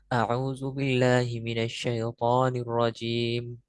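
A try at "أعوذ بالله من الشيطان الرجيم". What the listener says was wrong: এত তাড়াহুড়ার কিচ্ছু নাই। আমি কিভাবে বলেছি, আউযু বিল্লাহি মিনাশ শাইতানির রাজিম, রিল্যাক্সে।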